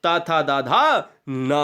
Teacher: ये दंत जो दांत की सहायता से बोले जाएं, वो दंत यानी दंत स्पर्श व्यंजन कहलाते हैं